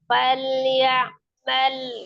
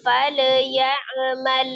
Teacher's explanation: sifat huruf lam itu tawasud juga maka dia mengalir sebagian biasa aja